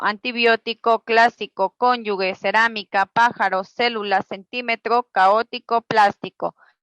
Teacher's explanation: las palabras esdrújulas llevan el acento o mayor fuerza de voz en la antepenúltima sílaba